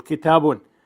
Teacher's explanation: Though written as a double vowel, it is pronounced as a short vowel followed by quiescent noon. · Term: tanween